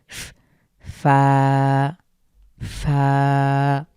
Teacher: আমাদের উপরের পার্টির সামনের দুই দাঁতটুকু নিচের ঠোঁটের মাঝখানে স্পর্শ করবে ফা ফা এবং হালকা বাতাস বের হবে